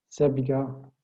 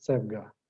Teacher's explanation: You can either add an epenthetic e here, sebiga, or you can shorten the vowel sebga.